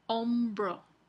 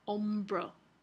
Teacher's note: bilabial ocula después de una nasal con el ejemplo aquí hombro después de nasal la el fonema B Se realiza como oclusiva